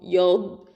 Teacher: இந்த ضاد அப்படிங்கிறது வந்து ஹஃபத்துல் லிசான் எழுத்து. இது ஜஹரு சிஃபத்து இருக்குது. இஸ்திஆலா எழுத்து ஹெவி லெட்டரு.